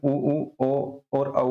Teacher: ओष्ठ में जिसमें जो है मुख जो है वृत्ताकार खुल जाता है, उसमें ओ और औ आता है।